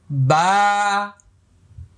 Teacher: বা এক আলিফ পরিমাণ লম্বা হবে। মুখটা খালি ফাঁকা হবে।